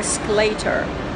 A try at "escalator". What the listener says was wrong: It's escalator. Escalator. The stress is on the first syllable. Escalator, not escalator.